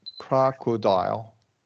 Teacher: we're gonna do a short O schwa for those O's.